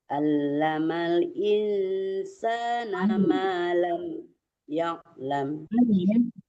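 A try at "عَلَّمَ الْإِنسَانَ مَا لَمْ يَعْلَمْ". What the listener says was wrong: Allamal, jangan allamal. Kalau allamal kayak alif yang dibaca ya di tengah-tengah tenggorokan. Allamal Qur'ana ma lam ya'lam.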